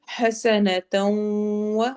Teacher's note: سین میں سیٹی والی آواز آئے گی،